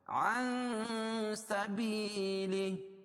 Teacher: عن سبیلہ اخفاء حقیقی، کیونکہ نون ساکن کے بعد حروف اخفاء کے 15 حرفوں میں سے سین ہے، اس کو ناک میں آواز کو چھپا کر پڑھیں گے